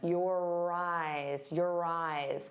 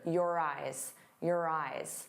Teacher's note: You're going to hear that R sound on both sides of the word if we link them. Your eyes, your eyes.